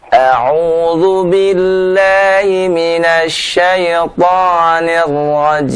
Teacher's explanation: huruf ro-nya juga tolong ditahan ya, jangan ditakrirkan lebih dari sekali